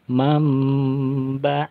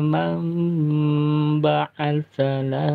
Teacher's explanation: Ini namanya hukum iklab, dipanjangkan 2 harokat, kemudian nun matinya berubah menjadi huruf mim